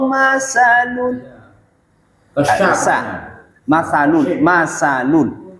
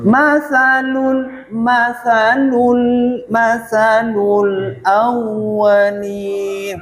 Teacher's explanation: Sebenarnya masalul, jangan sampai ada desis.